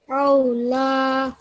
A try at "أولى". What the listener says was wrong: Okay, just be careful you don't make a ayn sound going on there, yeah? أولى.